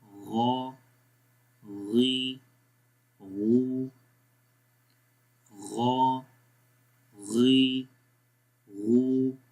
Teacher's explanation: گلے کے سب سے اوپر والے حصے سے بنسبت خا کے نیچے حصے سے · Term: غین